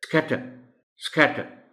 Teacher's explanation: سو ان کو سمجھایا بھی جائے گا، ان کو پریکٹس بھی کرائی جائے گی کہ ایس سی کو بالکل ملا کر تیزی کے ساتھ نکلنے والی ساؤنڈ پیدا کی جائے گی